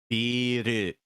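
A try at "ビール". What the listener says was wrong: Yeah, that E vowel kind of goes long. If you say it short, it actually ends up being a different word meaning building. So yeah, make sure to say it long.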